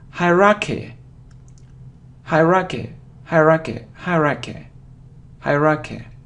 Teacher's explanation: So you see that the main stress is on the first syllable